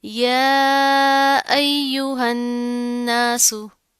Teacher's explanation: अब सीन में यहाँ पे आपने इसकी आवाज जो साउंड है ना, सीन में सीटी पाई जाती है, इसकी आपने साउंड सा की तरह नहीं करनी। · इसको मिलाकर पढ़ेंगे, नून पर गुन्ना करेंगे और फिर साथ का अलिफ पढ़ा जाएगा और फिर सीन को बड़ी हरकत जल्दी से पढ़ देंगे।